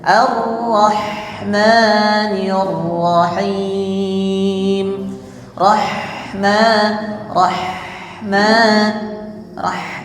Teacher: Rah tipis dadanya tidak bergetar